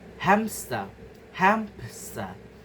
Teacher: When transitioning from the nasal m to the sibilent sh the lips close for m and then pop opened naturally creating a faint p sound. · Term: Consonant. Appenthesis.